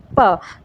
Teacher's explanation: हमारे दोनों होंठ हैं वो एक दूसरे को स्पर्श करते हैं और हवा बाहर निकलती है, तो इस वजह से इनको ओष्ठ्य व्यंजन कहते हैं।